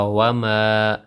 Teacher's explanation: الف مد ایک الف برابر لمبا ہوگا